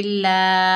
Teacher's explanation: लाम के ऊपर खड़ा ज़बर है, एक अलिफ की मिकदार खींचकर पढ़ेंगे